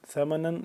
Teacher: نون دو زبر نن اس پہ ہم نے کیا کرنا ہے اخفا کرنا ہے نا کے اندر لے جا کر پڑھنا ہے اور اس کے بعد قلیلا قاف کو موٹا کر کے